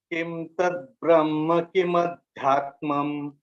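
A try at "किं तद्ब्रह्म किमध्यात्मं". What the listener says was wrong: Here you can use kin you can use because kim ta is coming. So kin. Kin tad Brahma kim adhyatmam.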